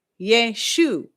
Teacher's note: in Hebrew, that S in the middle is going to make a sh sound